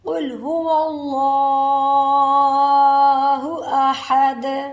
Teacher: دال پر قلقلہ ہوگا، ہا کو حلق سے نکالیں گے